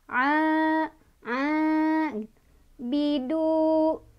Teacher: A bertemu sama maltobi'i, sebabnya karena ada fathah berdiri di atas ain ya. Cara bacanya dipanjangkan dua harokat.